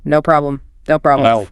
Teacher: really fast with a high pitch and no pause